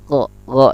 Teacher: Go ini khalqi, atas, tenggorokan atas. Tenggorokan atas, go, dan dia pun termasuk rakhawah dia.